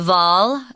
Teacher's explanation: it's pronounced with a V sound and not a W